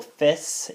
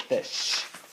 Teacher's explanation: palatal sounds are not produced as palatal sounds; they're produced further forward, more typically alveolar. So a sh is produced as a s, where we have the example fis instead of fish. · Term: depalatal